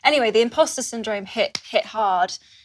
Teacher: If you look closely, you'll see that she does not lift her tongue when saying hit. The tip of her tongue is relaxed, sitting at the front of her mouth. As she transitions to the word hard, her tongue does not move. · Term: glottal stop